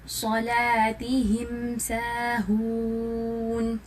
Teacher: ظاہر کرنا, so it means کہ ہم یہاں پر سمپلی پڑھیں گے, کلیئرلی پڑھیں گے, کوئی ایڈیشن نہیں کریں گے غنہ کی. ٹھیک ہے, لپس کو اسٹریس کر کے نہیں پڑھیں گے, جسٹ نارملی ہم اس کو پڑھیں گے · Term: اظہار شفوی